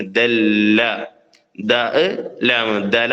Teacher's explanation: ലാമിൽ അല്പം സമയം കൂടുതൽ കൊടുക്കണം